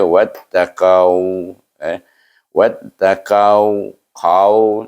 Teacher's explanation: iaitu huruf isti'la, qaf itu, iaitu pangkal lidah kita terangkat